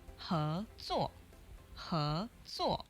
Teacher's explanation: so that's a second tone and a fourth tone goes up and then it goes down